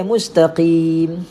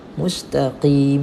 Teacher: huruf qaf jangan kita tukar dengan huruf kaf. Qim tebalkan.